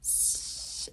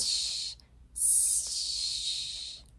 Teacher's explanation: If you go s and then move your tongue back a little bit, s, it becomes sh